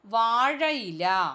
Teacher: അപ്പോൾ വാഴ, ഇല എന്ന് പറയുന്ന യാ വന്നു ചേർന്നു. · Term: ആഗമസന്ധി